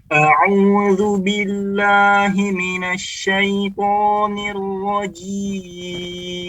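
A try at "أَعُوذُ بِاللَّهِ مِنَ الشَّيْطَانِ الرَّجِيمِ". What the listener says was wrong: Perhatikan huruf po, tempelkan lidahnya. Po. Dan perhatikan bibir nggak maju ya. Jangan tuh maju. Kalau bibir maju akan berbeda. Syaiton. Tidak ada kemajuan pada bibir kecuali pada harakat dhammah dan juga pada huruf waw. Selain itu tidak dikedepankan. Ya normal saja. Syaiton.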